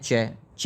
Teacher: च जो है यह आपकी तालव्य है